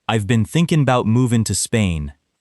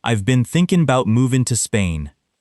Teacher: The stressed words are thinking and Spain. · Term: stressed content words